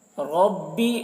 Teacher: را کو پر پڑھیں گے، را کے اوپر زبر ہے